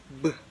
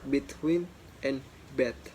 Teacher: Next one is b, voiced bilabial stop